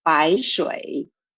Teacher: the first two characters in the second line bai shui both are falling tones